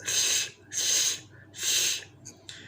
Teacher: A devoiced L is what you find in Tuxpan and surrounding areas.